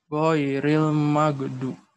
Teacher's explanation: gha termasuk huruf rokhawah yang mana kita harus tekan dan kita harus rasakan anginnya keluar.